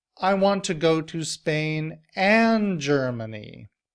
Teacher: The word and is a conjunction and it's one of the function words. However, I'm putting the stress on it to emphasize that I don't want to have to choose between Spain or Germany.